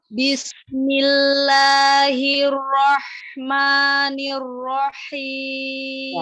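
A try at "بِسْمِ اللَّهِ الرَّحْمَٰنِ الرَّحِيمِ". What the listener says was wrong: Ya, hati-hati tamtil. Jadi hirrahmanir enggak. Langsung disamber karena ada tasdid.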